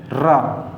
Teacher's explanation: रा आवाज़ हमारी क्या हो रही है, प्रकंपित हो रही है, यानी कि जीभ हमारी प्रकंपित हो रही है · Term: प्रकंपित और लुंठित व्यंजन